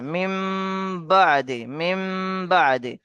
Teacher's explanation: এখানে তানবিন এর নুন সাকিনের পরে বা আসছে, নুন সাকিনের পরে বা আসছে, তাই এই নুন সাকিনকে মিমের দ্বারা পরিবর্তন করে পড়তে হবে। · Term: ইকলাব